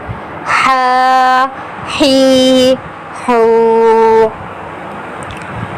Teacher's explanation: اب یہاں دیکھیں یہ ہا ہے, ہا کو ہم سختی کے ساتھ ادا کریں گے حلق کے نیچے والے حصے سے ہا ہی ہو, اور ہا کو حلق کے درمیان والے حصے سے